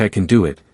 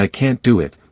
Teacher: Interestingly, even though both words contain the same letter a, the pronunciation changes. In can, the A has a lighter sound, almost like an E, while in can't, it leans into a deeper, more open A. So, you get something like I can do it, sounding almost like I can and I can't do it with a more dramatic a.